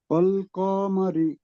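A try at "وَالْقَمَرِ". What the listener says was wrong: টান দেবেন না, ওয়াল কমারি। ওয়াও, ওয়াবের উপরে, র না, ওয়াও ওয়াও।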